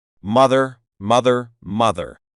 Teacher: in the American accent the r comes through at the end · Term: the r sound